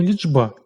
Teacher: Чому? Тому що дзвінкий «б» впливає своєю дзвінкістю на попередній «чи», через що він уподібнюється до «дж». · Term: уподібнення